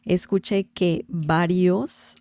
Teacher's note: Remember the V sound in Spanish is very similar to B as in bell in English.